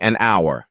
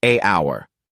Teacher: remember the H is silent